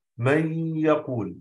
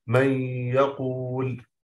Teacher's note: أضغمنا النون في الياء أصبحت حرف واحد مشدد من جنس الحرف الثاني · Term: إدغام بغنة